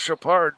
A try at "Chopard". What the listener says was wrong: Yeah, but D is silent.